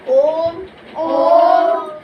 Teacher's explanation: अब पल्लुत स्वर जो है, ओम का जो उच्चारण होता है वह थोड़ा दीर्घ स्वर से और लंबा खींचना पड़ता है। दीर्घ स्वर से पल्लुत स्वर को और लंबा खींचना पड़ता है